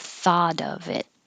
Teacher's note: In this case, the thought, the T will change to a no, wait, thought, yeah, changes to a D, and the of is really a U and a V sound. So the V will connect to the I.